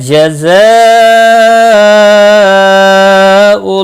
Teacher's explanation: لکا کو کھینچنا نہیں. جزاء زا کو تھوڑا سختی کے ساتھ ادا کریں اور مد متصل ہے 4 الف کے برابر کھینچ کر پڑھیں گے